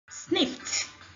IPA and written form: snɪft (Sniffed)